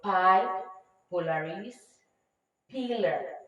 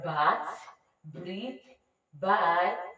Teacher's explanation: So, now, those two sounds and b are the bilabial sound because they are produced with our two lips, the upper lip and the lower lip